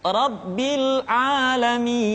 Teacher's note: Jadi mi dibaca panjang karena kita menemukan huruf sukun.